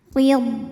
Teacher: Huruf ra dibunyikan secara tarqiq sebab ra berbaris kasrah, maka ra dibunyikan dengan tipis. Pangkal lidah kita turun ya.